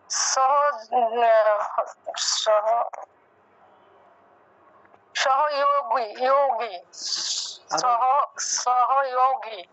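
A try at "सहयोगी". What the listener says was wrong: হ্যাঁ হ্যাঁ, সহযোগী। গিতে গিয়ে একটু টান দিতে হবে, কারণ এটা দীর্ঘ ইকার। দীর্ঘ ইকার না, সেজন্য একটু দীর্ঘ রূপে ইটা উচ্চারণ করতে হবে। তাহলে সহযোগী, সহযোগী।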